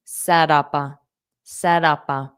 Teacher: So, I'll pronounce the P and A together.